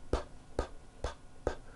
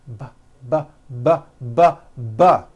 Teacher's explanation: They are produced exactly the same way here in your mouth, but the P sound has no voicing and the B sound, b, b, does have voicing. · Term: paired consonants